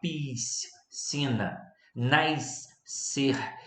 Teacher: Agora, dígrafos, nós temos vários e precisamos tomar cuidado. O carioca, então, tem que tomar muito cuidado com o dígrafo do SC, da palavra piscina, por exemplo, nascer, por exemplo, pois a gente fala muito chiado.